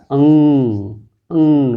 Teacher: अंग ऐसा लग रहा है नाक से आ रही है, तो इसको बोलेंगे, इसका उच्चारण स्थान नसिका, नसिका यानी नासिका, नेजल से।